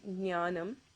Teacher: So you start off with the G, but it's almost silent. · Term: nya sound